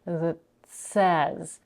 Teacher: We have a held T in the word that, and before the consonants, she's holding the T, she's not releasing it, and then she's releasing the air for the S